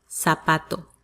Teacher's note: in latin america it sounds like an s